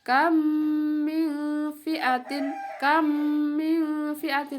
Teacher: Cara membacanya adalah seperti menyuarakan mim rangkap atau mim yang ditasydidkan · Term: idgham mimi